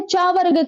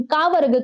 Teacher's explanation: चा वर्ग का उच्चारण तालु से होता है, लेकिन का वर्ग का उच्चारण कंठ से होता है।